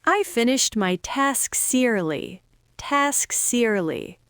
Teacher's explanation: pushing that final s onto the e breaks up the cluster and saves your tongue from working too hard.